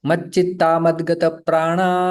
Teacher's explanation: संधि होके विसर्ग का लोप हो जाता है